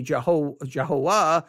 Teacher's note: the v would have a w sound